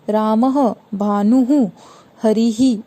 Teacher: विसर्ग स्वरों के आगे आने वाले बिंदुओं को विसर्ग कहा जाता है। विसर्ग का उच्चारण आधे ह की तरह किया जाता है। इसके प्रयोग किसी भी स्वर के बाद किया जाता है र स के स्थान पर, जैसे रामः, भानुः, हरिः, इस तरीके से, ठीक है।